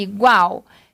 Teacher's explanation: Perceba que a letra U quase não é pronunciada.